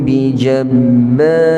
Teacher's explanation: pada ra itu kita tebalkan tetapi ba itu kita nipiskan